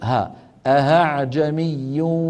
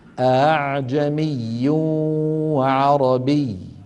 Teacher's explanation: وفي رواية حفص همزة مفتوحة مسهلة وجها واحدا، وهي الهمزة الثانية من قوله تعالى في سورة فصلت أعجمي وعربي، فيلفظها القارئ بين الهمزة المحققة والألف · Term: الهمزة المسهلة